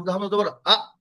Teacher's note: আহ বলবেন না বাতাস বের হবে না